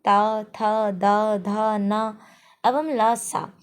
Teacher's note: दंत मतलब सब जीभ अपने दांत को स्पर्श करती है आगे की ओर